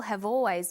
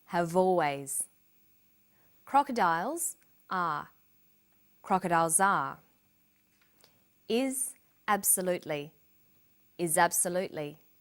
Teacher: People have always. Notice how in conversation we link the final consonant sound v with the initial vowel sound